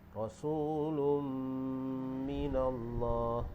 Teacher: Huruf mim ni termasuk dalam huruf idgham. Termasuk dalam huruf idgham ma'al ghunnah. Jadi dia jadi hukum idgham ma'al ghunnah. Jadi dengung dua harkat.